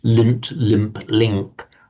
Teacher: It's natural for us to pronounce that nasal sound, the n and the m and the m, on exactly the same place that the following consonant comes out.